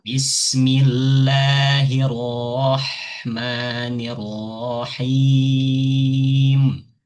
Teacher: cara menebalkan itu adalah menegangkan lidah kita masuk ke huruf ro